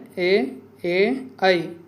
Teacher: ఏ, ఏ, ఐ ఇవి మూడు మనకు కంఠ తాలవ్యాలు అవుతాయి